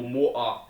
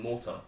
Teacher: in Glasgow we have a glottal stop and stuff like that, so we roll over our T's accidentally.